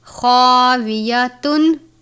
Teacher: خا کو بھی پر پڑھتے ہیں. خا حروف مستعلیہ میں سے ہے.